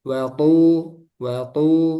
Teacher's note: untuk th jangan ada udara jadi jahr